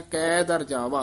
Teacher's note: ਕੈ ਦਰ ਜਿਹੜਾ ਪਾਠ ਹੈ ਇਹ ਲਮਕਾ ਕੇ ਉਚਾਰਨ ਕਰਨਾ